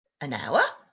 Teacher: hour doesn't start with a vowel, it starts with H, but it starts with the vowel sound of ow. So that's why we use an.